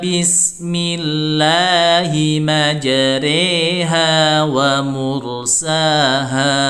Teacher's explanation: Harusnya majroha menjadi majreha itu dimiringkan dimiringkan bacaannya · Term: imalah